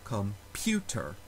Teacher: it is the second syllable that is stressed